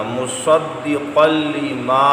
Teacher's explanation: یہاں پر لام آ گیا تنوین کے بعد، یہاں بھی غنہ نہیں کرنا